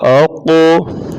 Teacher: حمزہ زبر قاف اقو، قاف کو پور پڑھا جائے گا یعنی موٹا پڑھا جائے گا اور اس کے اوپر قلقلہ کیا جائے گا